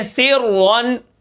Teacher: را کو ہم موٹا پڑھیں گے چاہے پیچھے زیر ہے۔ زیر کو نہیں دیکھنا ہم نے را کی اپنی حرکت کا لحاظ کرنا ہے، ٹھیک ہے۔